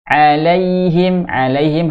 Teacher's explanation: alaihim harus lembut karena Lin di sini fathah ketemu dengan Ya Sukun alaihim thiron di sini Har Idhar eh tanwin fathah ketemu dengan